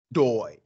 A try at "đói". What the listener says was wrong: Dấu sắc nha em, dấu sắc, Đói. Đói. Đúng rồi, không phải là đối nha em. Đối, đối là cái này, is o sao? đói. đói. Đói. Nè, đói.